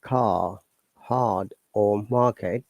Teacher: when R comes after a vowel in the same syllable, as in car, hard, or market, the R is not pronounced. Hence, British English is non-rhotic.